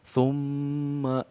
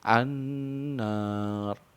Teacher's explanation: mendengung di pangkal hidung dengan mendengungkan huruf mim dan nun bertasdid di pangkal hidung selama dengan 2 sampai 3 harokat. Di sini ada contoh thumma, jadi ada interval waktu 2 sampai 3 harokat untuk di dengung mimnya ya. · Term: gunah